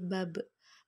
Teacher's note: ketika hurufba dalam posisi mati suara terdengar mantul